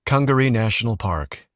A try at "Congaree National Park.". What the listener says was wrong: A little too fast.